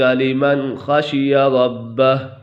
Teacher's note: لمن یہاں پر نون ساکن کے بعد حرف حلقی میں سے خا گیا ہے تو یہاں پر اظہار ہوگا، یعنی غنہ نہیں کریں گے